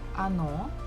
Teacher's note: the second syllable is stressed, so we must pronounce it O. The first one is not, so we pronounce it as A